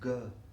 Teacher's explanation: if you loosen the vocal cord, soften it, and release it with minimum breath, it becomes ga.